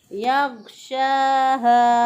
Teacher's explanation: शीन को खड़ी ज़बर के साथ एक अलिफ के बराबर लंबा करेंगे।